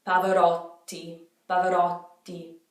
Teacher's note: So what you do is you make a little tiny pause before the T.